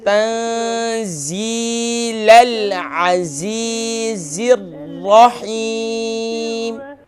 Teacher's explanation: یا مدہ ہے، اسے ہم تھوڑا سا کھینچیں گے ایک الف کی مقدار